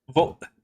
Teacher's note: Gonna make sure you get that glottal stop in there.